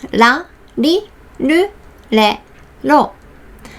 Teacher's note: because we don't have R sounds, we just say la. It's almost like L sounds.